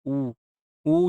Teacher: उ ऊ जब जब भी बोलेंगे तो हमारे ओठ क्या होता है? गोलाकार स्थिति में आते हैं।